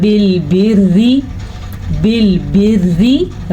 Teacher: را باریک ہے، را کے نیچے زیر ہے